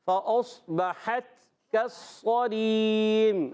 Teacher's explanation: فأصبحت، اس میں فا پر زبر ہے، فا کی ادائیگی اوپر والے دانتوں کنارے، نیچے والے ہونٹ کے تر حصے سے